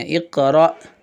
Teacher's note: हमज़ा साकिना के पढ़ने में झटका होता है, हमज़ा साकिना के पढ़ने में झटका होता है, यानी जिस हमज़ा पर सुकून हो जज़्म हो उसके पढ़ने में एक झटके की आवाज़ आनी चाहिए।